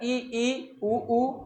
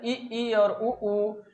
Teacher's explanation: संवृत स्वर में आएगा इ, ई, उ, उ ऊ। ये संवृत स्वर है जिसमें मुख लगभग बंद रहता है।